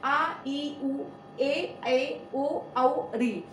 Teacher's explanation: तो ये दीर्घ स्वर होते हैं, इसमें दो मात्रा का समय लगता है। दूसरी बात, ये अ और अ से मिलकर बना है आ, तो ये इसी तरह ई छोटी छोटी ई से मिलकर बनी है बड़ी, उ छोटा उ बड़ा उ से मिलकर बना है बड़ा उ, तो ये दीर्घ स्वर है।